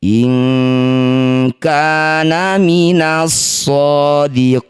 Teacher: alaiha inana nun sukun atau tanwin bertemu kaf atau qof sama dengan baris pertama tadi disebut bacaan ikhfa namanya ikhfa ab'ad ganti bunyi nun sukun jadi eng dengungkan dua harakat